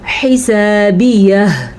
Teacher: हिसाबियह, हा के मखरज का आपने ध्यान रखना है और अलिफ मद्दा को अदा करना है। आखिर में हा की आवाज़ ज़रूर आनी चाहिए। ये जो आपको नज़र आ रही है हा, इसकी आवाज़ हिसाबियह, ये आवाज़ ज़रूर आनी चाहिए।